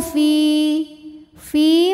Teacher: karena ada Ya Sukun didahului harakat kasrah maka Fa panjang dua harakat